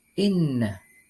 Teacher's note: Cara membacanya yakni dengan mendengungkan 2 sampai dengan 2,5 ketukan. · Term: gunnah